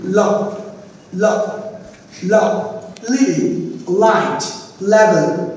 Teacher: আমাদের জিহ্বার আগা আমাদের আলভিওলারের মধ্যে টাচ করবে